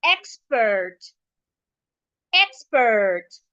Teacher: I'm stressing the first part because the word is a noun. So, because I'm stressing the first part, it means that I am stressing the e.